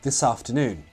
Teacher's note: The first syllable is reduced to a weak form and sounds like the.